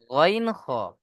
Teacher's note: কণ্ঠনালীর শেষ ভাগ হতে উচ্চারণ হয় গইন খ